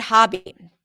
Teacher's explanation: Hobby is the ah as in father. Not an O sound.